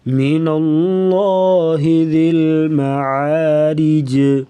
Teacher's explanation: را کے نیچے زیر تو را کو بریک پڑھیں گے